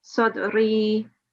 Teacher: give two seconds on the last bit even in the pause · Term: elongation